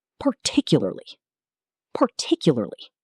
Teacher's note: Stress on the second syllable.